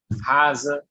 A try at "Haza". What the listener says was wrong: That's correct.